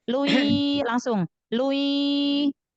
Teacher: tanwin ketemu ya-nya langsung idgham, jangan dipanjangkan harokat lu-nya, u-nya, domahnya.